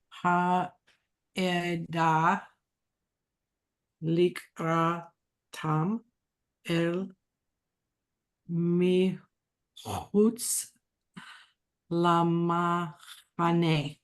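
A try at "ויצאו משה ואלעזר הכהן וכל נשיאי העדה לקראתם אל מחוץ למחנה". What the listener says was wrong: Very good.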